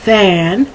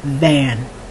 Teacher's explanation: So one is with air coming out, fan, and the other no, van.